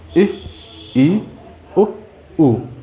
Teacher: देखिए इ, ई, उ। लगभग मुंह बंद है, बहुत हल्का सा खुला है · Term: संवृत स्वर